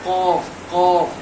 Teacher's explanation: काफ जो है इसमें कलकला होता है। आवाज जो है बहुत ही टक्कर खाकर आता है।